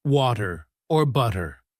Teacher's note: the flap t sound where the t sounds like a soft d as in water or butter. Learners often either overemphasize the t or avoid it entirely, making their speech sound less natural.